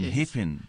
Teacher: the front vowels are rising, and so the A is turning into E